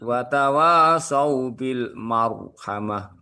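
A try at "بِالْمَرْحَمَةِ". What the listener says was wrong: Jadi jangan ditipiskan, jangan marhamah lah itu tipis gitu ya. karena roknya sebelumnya di rok sukun sebelumnya didahului oleh fathah. Itu masih dibaca tebal gitu ya.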